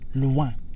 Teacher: We're not saying loin, but the N isn't exactly silent. We're not saying loi. The word ends in the nose. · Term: nasal sound